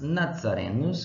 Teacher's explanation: A letra Z, em latim, se lia zeta, ou seja, era pronunciada sempre com o som de Z, como se tivesse um D antes desse Z